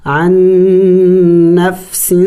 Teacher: یہاں پہ ادغام ہو چکا ہے تو ہم یہاں پہ عین کو ڈائریکٹ نون کے ساتھ ملائیں گے۔ عن نفس، چونکہ نون مشدد ہے غنہ بھی کریں گے، نون مشدد پر غنہ کیا جاتا ہے۔